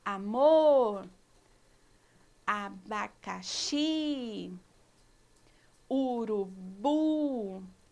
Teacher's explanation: são aquelas que a última sílaba é tônica a última sílaba é pronunciada com mais força os exemplos amor o abacaxi o urubu faz assim tal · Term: oxítonas